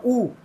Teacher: ऊ बोलते हुए मेरे होठ गोल स्थिति में आ गए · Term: वृत्त मुखी, वृत्तमुखी